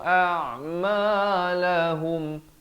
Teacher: Izhar syafawi, jangan panjang, hub terus masuk.